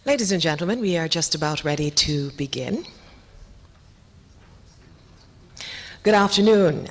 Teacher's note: i could be wrong but i'm almost sure she was a bit breathy to me